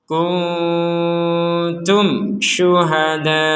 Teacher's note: mim sukun bertemu syin maka ini dibaca dengan jelas